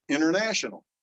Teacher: Drop the T, it just fell out of there. We never said it, international. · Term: deletion